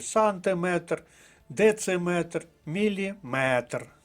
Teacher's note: що закінчується на метр має наголос на останньому складі